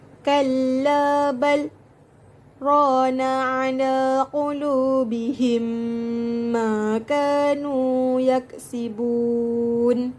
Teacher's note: berhenti sejenak dengan menahan nafas selama tidak lebih dari 2 harakat dan kemudian meneruskan bacaan tanpa perlu mengambil nafas yang baharu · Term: Sa'tah